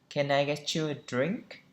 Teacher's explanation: chúng ta lên giọng ở cuối câu